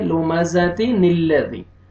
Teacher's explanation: ابھی میں آپ کو جو ہے نا وہ شارٹ کٹ سمجھاتا ہوں کہ یہ اصل میں لمزتن ہے. تنوین کے بعد جب حمزہ وصلی آتا ہے تو تنوین جب ملاتے ہیں تو تنوین کے نون کو کسرہ دے کے ملاتے ہیں اور بیچ میں حمزہ وصلی گر جاتا ہے. تو لمزتی نلذی لمزتن ہے نا تن تا کسرہ نون سکون تن تو یہ نون کو جو ہے نا ہم کسرہ دیں گے اور لام کے ساتھ ملائیں گے لمزتی نلذی.